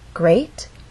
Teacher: That means this is the point where our voice will go up. Great has one syllable, so we only have one syllable to make our voice glide up. Great. And we're using rising intonation because this question requires a yes or no answer.